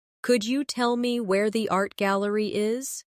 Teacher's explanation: In connected speech, could you becomes could ya.